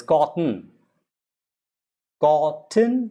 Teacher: the t also is slightly silent